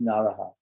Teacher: So, okay, it's the word naras, but the s changes by sandhi into a visarga